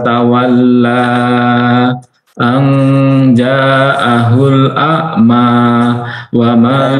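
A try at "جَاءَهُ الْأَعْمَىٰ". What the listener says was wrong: mohon maaf, Pak. Jimnya 5 harokat. Diulang.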